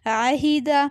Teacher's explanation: आइन ज़बर आ, हा ज़ेर ही, आही, दाल ज़बर दा, आहिदा। ये आइन हलक से अदा होगा और हा की आवाज़ जो है सीने से निकलेगी